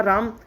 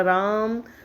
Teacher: लेकिन अगर हमने किसी को पुकारा दूर से, राम नाम का लड़का खड़ा, उसे हमने पुकारा राम, तो ये प्लुत हो जाएगा। रा में 2 मात्राएं और ज़्यादा लगी, 3 मात्राओं में उच्चारण हुआ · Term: प्लुत स्वर